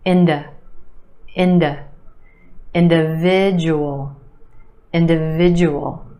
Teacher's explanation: The second syllable is where you have the schwa, d, d. Inda, inda.